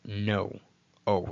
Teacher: Now, the O here, it's not like the English, the short O like God or not, but just think of the word no. O, it's a hard, long O